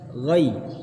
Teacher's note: Ghain fathah ketemu ya sukun, maka lin, madlin ditarik. Ghai. Biar sempurna suara i-nya.